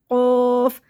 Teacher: اور یہ قوف موٹا کر کے پڑھنا ہے، حلق کو جیسے ہم بند کر کے کھولیں گے